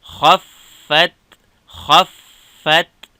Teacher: که اواز مات سي نو بیا قلقله کیږي. خا د فا سره فا د تا سره خا ډکه فا او تا نرمه. خا فا زبر خف فا تا زبر فت خفت خفت که وقف خفت خفت.